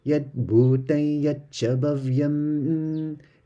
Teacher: Notice the bhu is double u going down